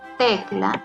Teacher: Tecla tiene su sílaba tónica en la penúltima